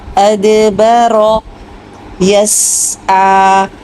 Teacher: سین کے آواز کو جلدی نہیں چھوڑنا، آئین کو کلیئر کیجیے، اور یس یہ دو حرکت پہ روک دیجیے آواز کو، ٹھیک ہے، اتنا لمبا نہیں کرنا کھڑا زبر کو، بس دو حرکت ہی پڑھنا ہے۔